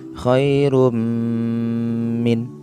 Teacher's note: Nah, khairum min ini ditahan bacanya ya. Bacanya ditahan, satu alif dua harokat panjang ya. Berarti kalau dua harokat dua ketukan. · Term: idgham bi gunnah